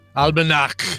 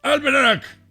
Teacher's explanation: it's more of a CH sound, not like cheese, but more like a throaty, angry cat hiss noise.